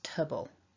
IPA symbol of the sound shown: ə